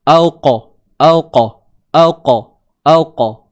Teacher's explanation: Al-qara. Huruf qaf yang bertanda sukun. Kat sini ada sifat lantunan. Disebut qalqalah. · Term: qalqalah sughra